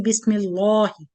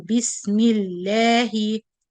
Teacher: The kasra cause the lam to be light.